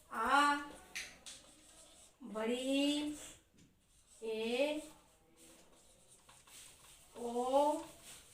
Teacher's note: दीर्घ मतलब आप लोग पता होगा, दीर्घ मतलब ज़्यादा समय लगता है। ह्रस्व स्वर से 2 गुना समय लगता है, दीर्घ स्वर ज़्यादा समय लगता है।